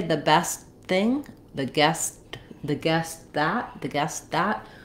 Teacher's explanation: But if I say the best thing, the guest that, we tend to use an unreleased t here. That means I'm not saying the guest that, I'm not letting that t burst out.